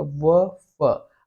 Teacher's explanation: आपका जो होठ है वो आपके दांत से टकराएगा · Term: दंथोष्ठ